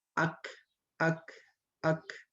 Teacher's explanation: dia menjadi hanya memiliki sifat Hames gitu keluar nafas